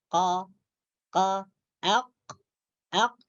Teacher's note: pangkal lidah ini akan menyentuh langit-langit lembut di atas. Tepatnya bersentuhan dengan anak tekak. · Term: huruf qaf